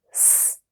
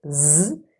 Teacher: S is a voiceless alveolar fricative and Z is a voiced alveolar fricative. And here you can clearly hear and feel the difference between voiceless and voiced.